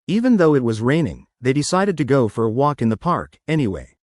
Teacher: let's add a tiny pause before, anyway, to emphasize the unexpected decision. And a bit more stress on raining.